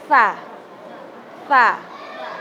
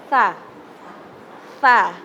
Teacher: Lidahnya digigit sama gigi atas bawah